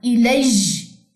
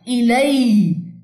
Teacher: इसमें एयर नहीं डालनी, ये जी नहीं है, सिंपल या है